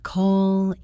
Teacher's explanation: Keep the stress on that first syllable every time.